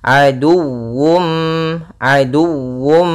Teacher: di sini harus dibaca juga dengan sempurna wawunya dengan tasydid.